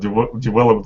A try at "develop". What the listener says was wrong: By the way, just let me hear the V in develop. Develop. Because I'm hearing develop with a W instead of a V. Develop.